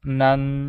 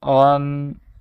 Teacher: مخارج ہے ناک کا بانسا، کہ اس کی آواز جو ہے وہ ناک سے ادا ہوگی، ناک سے نکلے گی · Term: غنہ